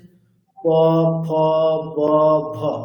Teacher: তেমন কি হচ্ছে প ব অর্থাৎ দুটো অষ্ঠ পুরোপুরি স্পর্শ করছে দুটো অষ্ঠ পুরোপুরি স্পর্শ করে যে বকারটা উচ্চারণ করছে সেটি কোন বকার বর্গীয় বকার